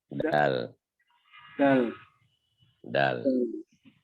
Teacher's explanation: Makhraj ujung lidah bertemu pangkal dua gigi seri muka yang atas bagian dalam. Punggung ujung lidah bertemu pangkal dua gigi seri muka yang atas bagian dalam.